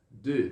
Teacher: Aí não tem como ficar o D aberto. Então, de, com um leve biquinho, um sonzinho do E do francês